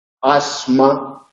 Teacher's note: Al ser sorda no se puede ensordecer, aunque hay casos en los que se sonoriza, por ejemplo en asma, esa S es sonora porque la consonante siguiente es sonora